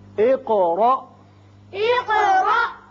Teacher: قاف کی صفت قلقلہ اور آگے الف ساکن جو ہے جھٹکے سے پڑھا جائے گا